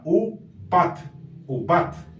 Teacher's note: aquí ya no suena como una V, sino como una vocal U